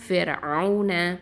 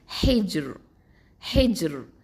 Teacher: Okay, அடுத்த விஷயம் என்னென்னா ரா சுக்கூன் பெற்றிருக்கணும், அதுக்கு முன்னாடி உள்ள எழுத்து கஸ்ரா பெற்றிருக்கணும். இப்போது ஃபிர்அவுன இதை சொல்லும் போது தர்கீக்காக தான் நம்ம உச்சரிப்போம், மெல்லினமாக தான் உச்சரிப்போம்.